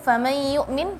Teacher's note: Sama dengung famay yu'min, tadi masih famay harus beralih, sebagian beralih ke dengung atau ke rongga hidung